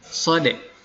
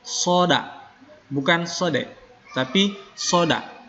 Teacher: pengucapan sodakowlohuladzim ada yang membacanya Sodek ya seolah-olah Danya itu mati huruf Dal itu mati jadi dia Qalqalah